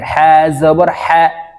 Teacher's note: হবে হা হলকের শুরু থেকে উচ্চারণ করতে হবে হা জবর হা হলকের মধ্যখান থেকে চাপ দিয়ে উচ্চারণ করতে হবে হা জবর হা বাতাস বের হবে হা জবর হা জবর হা